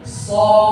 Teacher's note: Dia makhrajnya itu seperti so, lidahnya bukan tengahnya yang naik, tapi pangkal lidahnya. So. Lagi dibuka lagi mulutnya. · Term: huruf so